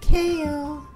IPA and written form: keɪl (Kale)